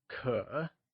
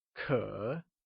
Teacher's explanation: it is said with a falling rising tone like ker